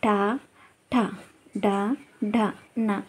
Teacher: మనం అంగిటి సహాయంతో పలుకుతాం కాబట్టి ఇవి మూర్ధన్యాలు